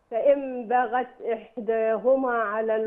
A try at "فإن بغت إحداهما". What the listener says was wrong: مش بغى مش بغى فإن باغ الباء مرققة يا حاجة والغين مفخمة. فإن باغت باغت